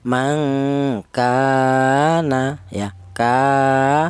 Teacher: Alasannya ada alif yang didahului huruf yang berharakat fathah. Cara bacanya yaitu dipanjangkan dua ketukan ya, dua harakat. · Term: mad thobi'i